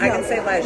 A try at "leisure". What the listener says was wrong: No, you're pronouncing it like you live in the UK.